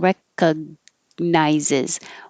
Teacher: you're not really releasing recog, you're holding it in the G position